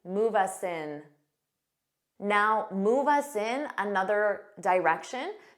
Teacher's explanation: native speakers commonly link our sounds together so you could see this with move us in it may sound like one word